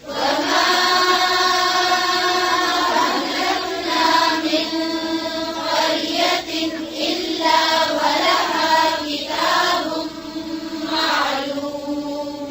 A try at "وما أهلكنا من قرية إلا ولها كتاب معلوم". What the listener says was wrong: हमजा को आइन नहीं पढ़े फिर से.